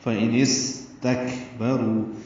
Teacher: رو واو مدہ ہے، 2 حرکات لمبا کریں گے